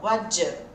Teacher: Só que a gente sabe que do com you vai virar j. · O som do T vai sumir.